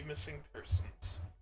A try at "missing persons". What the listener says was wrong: Oh, you said person. I didn't hear the s,